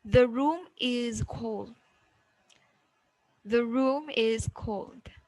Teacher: Normal, rise, and then down. That is rising, then falling intonation. · we have this rising falling intonation for statements, for sentences. Declarative sentences.